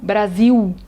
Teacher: na língua portuguesa o l é muitas vezes falado como u